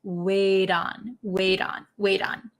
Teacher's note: this T becomes a D sound